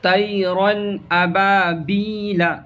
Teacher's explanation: گنہ، ناک میں تھوڑی دیر آواز کو روکنا گنہ کہلاتا ہے، اور یہاں کہہ رہا ہے کہ بغیر گنہ، ناک میں ہلکا سا بھی آواز کو روکنا نہیں ہے، بغیر گنہ کے جلد پڑھیں گے، اس کو اظہار کہتے ہیں۔